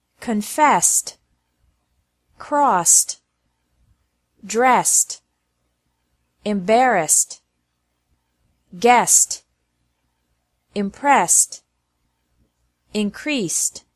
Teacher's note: Ed is also pronounced like T after verbs ending with an S sound.